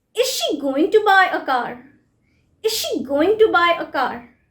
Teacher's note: stress is on going and buy car